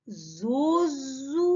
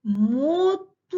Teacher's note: ненаголошений звук о перед складом з наголошеним у вимовляємо з наближенням до звуку у наприклад зозуля зверніть увагу о наближена до у мотузка о наближена